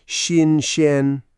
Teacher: Both start with X in Pinyin, which is like a light SH sound with your tongue forward.